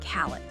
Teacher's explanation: It links the L sound to the I sound making it sound like call it.